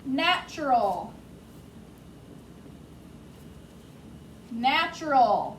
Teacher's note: you hear the ch sound but there is no ch